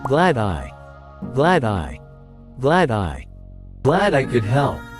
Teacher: notice how the words glad and I are linked together